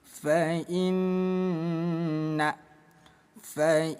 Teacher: Ada nun yang bertasydid disebutnya bacaan ghunah musyaddadah. Cara bacanya bunyi nun kita tahan dua ketukan dengung.